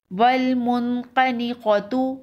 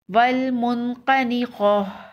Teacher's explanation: وقف کی صورت میں تا ہا میں بدل جائے گی